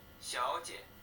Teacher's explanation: the second syllable of the word for miss sounds very weak? 小 姐， Yes, it's a neutral tone or a toneless syllable.